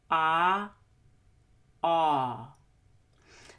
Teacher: So the short back O is just rounded. The tongue tip is lower than the back of the tongue, and the lips are oval shaped.